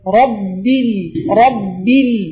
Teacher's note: பாவோட வெளியாகக்கூடிய இடம் இந்த ரெண்டு உதடுகளும் சேர்ந்து வெளியாகும்